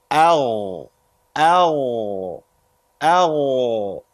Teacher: So these 2 letters from the top of the throat.